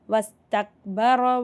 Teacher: ரா மேலே ஜபர் இருக்கிறதுனால ராவை வல்லினமாக ஓதணும்.